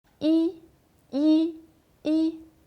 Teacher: Il est au premier ton, comme une ligne droite. Quand on le prononce, cet accent est plat et haut.